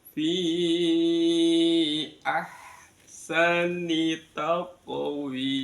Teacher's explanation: mad jaiz munfasil. Kita baca lima harakat